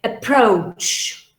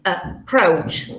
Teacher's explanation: Approach. The stress falls on pro. Okay. So always when you have a schwa, it's on unstressed syllable.